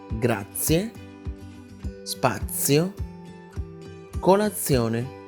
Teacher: Esta pronunciación se siente suave y limpia. Es como si al momento de pronunciar la Z, en medio metiera la T. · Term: Pronunciación sorda de la Z